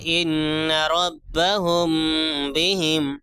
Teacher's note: اخفاء شفوی کا قاعدہ کیا ہے، میم ساکن کے بعد با آئے تو غنہ ہوگا، میم ساکن کے بعد با آ جائے تو غنہ ہوگا، اخفاء ہوگا. میم کی آواز کو ناک میں چھپا کر پڑھیں گے، جیسے ان ربہم بہم، میم کی آواز کو ایک الف کے برابر کھینچ کے بھی پڑھیں گے اور آواز کو ناک میں چھپائیں گے.